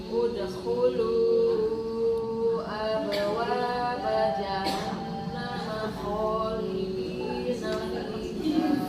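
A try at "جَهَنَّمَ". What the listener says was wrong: Gunanya kurang. Haknya kurang halus juga. Suaranya. Jahannam.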